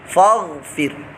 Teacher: ٹھیک ہے اگر غین جو ہے یہ ساکن نہ ہوتا تو فا الف زبر فا پڑھا جاتا لیکن غین جو ہے یہ ساکن ہے تو ساکن اور متحرک سے مل کر پڑھا جائے گا تو پیچھے متحرک فا ہے تو جب فا سے مل کر پڑھے گا تو بیچ میں جو الف ہے یہ حذف ہو جائے گا مطلب ختم ہو جائے گا